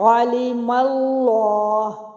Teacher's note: تو لام اسم جلالہ کا جو لام ہے یہ پر پڑا جائے گا.